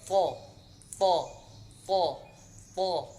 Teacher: Makharijul hurufnya antara ujung lidah bertemu dengan tempat tumbuh gigi seri bagian atas.